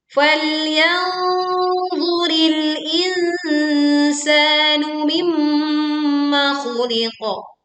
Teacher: kita memantulkan huruf qaf sukun karena wakaf di sini dengan suara yang tebal dan kuat